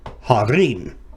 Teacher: the hey with a kametz under it is not accented. The accent is on the next syllable.